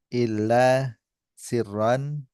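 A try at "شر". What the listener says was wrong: Syiron, mana syiron? Syiron atau syarron? Dalam Al-Quran, syirun atau syarrun? Min syarril waswasi atau min syirril waswasi? Min syarril waswasi.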